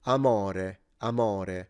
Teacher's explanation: in this case, the guy said amore, amore. So the O was very open